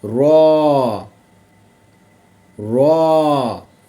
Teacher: جب اوپر والے 3 دانتوں کے مسوڑوں سے لگے، ٹھیک ہو گیا، تو اس سے را ادا ہوتا ہے